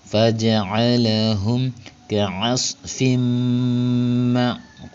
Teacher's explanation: Selanjutnya ada hukum mim sukun yang menghadapi huruf qaf, disebutnya hukum bacaan izhar syafawi karena ada mim sukun yang menghadapi huruf hijaiyah selain mim dan ba. Maka cara bacanya mim sukunnya diizharkan atau dibaca dengan jelas, bunyi m-nya jelas.